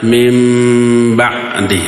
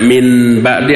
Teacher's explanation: nun mati menghadapi huruf ba, disebutnya apa? Iqlab. Si nunnya berubah menjadi apa? Mim.